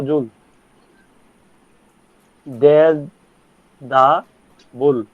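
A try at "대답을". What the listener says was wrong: থে প্রথমটা হবে থে দা বুল।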